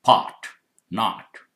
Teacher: American English, these sounds change to more open ah sound.